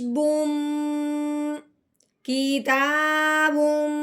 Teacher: میم کا غنہ کرنا ہے منہ بند کر کے، ناک میں سے آواز نکالنی ہے، ایک الف کے برابر جتنا لمبا کرتے ہیں اتنا ہم نے غنہ لمبا کرنا ہے۔